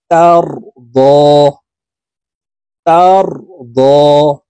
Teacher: তা র জবর তার, ضاد খারা জবর দ, দদের উপরে খারা জবর, তো এই দদকে এক আলিফ টেনে পড়ব।